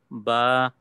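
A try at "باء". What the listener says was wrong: No, don't make ba heavy. Smile. Say ba. Ba.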